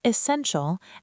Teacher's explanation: It's pronounced essential and the stress falls on sen.